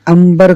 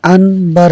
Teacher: ہے، ان عین نون زبر ان بار زبر بر، انبر، تو نون کو میم سے بدلا گیا قریب المخرج ہونے کی وجہ سے